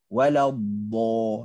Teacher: Huruf O yang keluar. Sedangkan dalam bahasa Arab dia tak ada O. Dia ada A je.